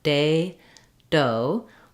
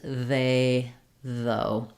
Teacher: my front teeth and you should feel day uh doe that the air stops and then bursts out there's a different quality to the sound it's a plosive sound